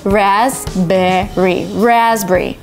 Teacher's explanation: So P in raspberry is actually silent